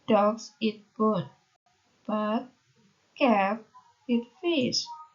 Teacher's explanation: the first half requires rising intonation, and the second half will take on falling intonation. The cradle of intonation in both parts is the last content word of each part. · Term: rising falling intonation